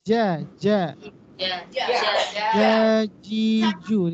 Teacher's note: Jim di tengah lidah. Ja, jiju di tengah lidah.